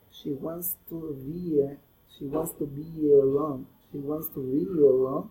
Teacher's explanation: we insert a Y sound at the beginning of the next word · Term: vowel linking